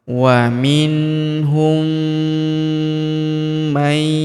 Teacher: Wa minhum may, huruf nun sukun bertemu huruf ya berharokat tasydid, maka nun sukunnya melebur ke huruf ya yang berharokat tasydid, kita tahan dan kita tekan, serta kita dengungkan 2-3 harokat